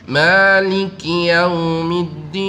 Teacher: Ma itu 2 harokat. Dan ma ini juga bisa dibaca 1 harokat.